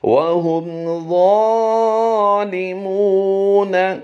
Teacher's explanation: واؤ ساکن سے پہلے حرف پر پیش ہے، واؤ مدہ ہوگا، اس لیے یہاں پر اسے کھینچ رہے ہیں